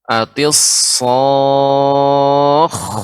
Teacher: sod seperti sin ya, tapi dia di isti'la ya, ditebalkan naik ke suara ke langit